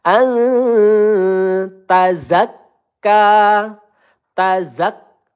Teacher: Ila kita panjangkan dua ayunan atau empat harakat. An nun sukun bertemu ta ya. E hukum bacaannya ikhfa halqi. Kita panjangkan dua atau tiga harakat